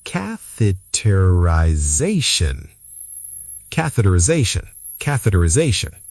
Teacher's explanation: The i before ZAY sounds like eye.